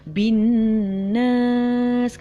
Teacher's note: Jadi bunyi ba tu masuk kepada bunyi nun.